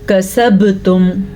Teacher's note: बा पे कलकला हो रहा है, बा पे जज़म की वजह से।